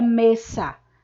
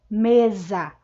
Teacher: o s quando é falado ele se transforma ele é pronunciado com som de z isso acontece porque o s está entre duas vogais né a